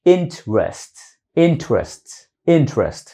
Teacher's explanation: đọc nhanh cái tự động cái âm th nó nối vô cái âm r nó tạo thành giống như chữ tr r Việt Nam nhưng mà không phải interest interest interest interest